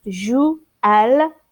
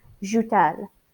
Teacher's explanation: Notice the T is here because joue-elle, that sounds bad. So we're going to use the T as a liaison